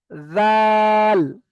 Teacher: জীবের আগা সামনের উপরে দুই দাতের আগার সঙ্গে লাগিয়ে চেপে উচ্চারণ করবেন